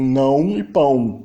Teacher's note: A nasalização tende a fechar o A